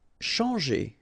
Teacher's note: Okay, when you combine this C and H, you get the sound sh. And after that, you've got your nasal en, chan, and then g.